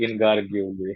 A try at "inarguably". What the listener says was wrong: Not gar saying especially undoubtedly or inarguably, please emphasize it.